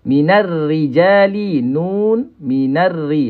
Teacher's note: Ra ni dibaca dengan nipis. Masa waktu dia mati pun kita baca dengan nipis.